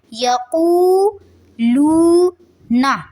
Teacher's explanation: نون کی زبر کو لمبا نہیں کریں گے